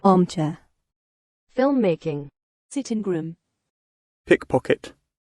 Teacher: For compound nouns, the first part is heavily stressed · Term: stress on the first part